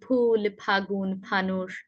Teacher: প অল্প প্রাণ কম জোর দিয়ে বলবো, ফ মহাপ্রাণ বেশি জোর দিয়ে বলবো